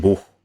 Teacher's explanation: it's an H that is pronounced at the same area as K